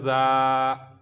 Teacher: ज़बान को 2 दांतों के दरमियान पकड़ने वाला ज़ाल, नरम हरूफ है